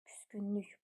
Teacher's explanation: Vurğu sonuncu hecanın üzərindədir.